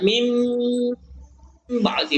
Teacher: Maka nun sukunnya ini dibaca jadi mim. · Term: iqlab